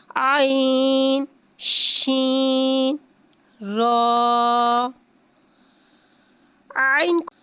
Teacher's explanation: شین کو ایک الف یعنی 3 حرکات کے برابر کھینچ کے پڑھیں گے. شین میں تفشی والی سیٹی کو ظاہر کر کے پڑھیں گے. را کو ایک الف یعنی 2 حرکات کے برابر کھینچ کے پڑھیں گے.